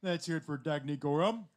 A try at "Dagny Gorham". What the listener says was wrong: It's Dagny, right? Okay, Dagny. Pronounce the A like day. Dagny. I was like, uh-oh, he said it wrong.